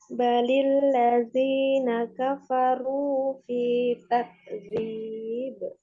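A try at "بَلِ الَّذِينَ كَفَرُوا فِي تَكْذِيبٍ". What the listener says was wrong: Nah, hurunya bisa ditebalkan lagi ya, Mbak. Balil ladzina kafaru fi takdzib.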